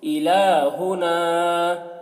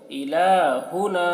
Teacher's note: لام میں کھڑا زبر ہے، کھینچ رہے اس کو